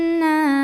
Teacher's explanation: nunnya bertasydid maka cara bacanya didengungkan tahan dengungannya kurang lebih 2 harokat karena ada Alif yang didahului baris fathah maka dibacanya panjang 2